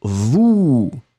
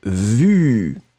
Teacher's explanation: Le A, c'est le OU qui est très très rond, vous. Le deuxième, c'est le U qui est beaucoup plus étroit et c'est vu.